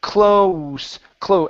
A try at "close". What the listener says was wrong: give me a little bit more oo at the end of that vowel